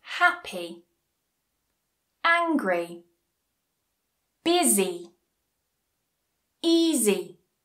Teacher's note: Two syllable adjectives. And just like our first rule the stress goes on the first syllable.